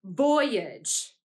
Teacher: which syllable was accented or said more loudly it was the syllable boy · When we pronounced it, we said it like this: voyage. That means that age, the age suffix, was unaccented because we said it more quietly.